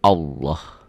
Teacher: Nih, lafaz Allah dibaca tafkhim, tebal, berbunyi Allah. Jadi kalau mengungkapkan ini seperti ada W-nya ya.